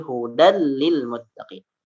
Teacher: ya dimasukkan ke dalam huruf lam tanwinnya dimasukkan